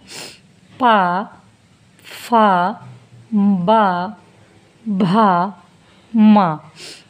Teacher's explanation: तो देखिएगा जब हमने इनका पांचों का उच्चारण किया तो हमारे होठों पे इसका प्रभाव दिखा, क्योंकि और कुछ नहीं है, सिर्फ होठों का इस्तेमाल हुआ, इसीलिए इनका जो उच्चारण स्थान ओष्ठ है